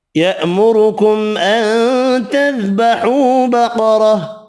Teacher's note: را پیش کی وجہ سے پر پڑھیں گے، میم کا اظہار ہوگا، یہاں نون کا اخفا ہوگا۔